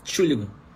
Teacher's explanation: Nem bota o EN no início, já começa do T já.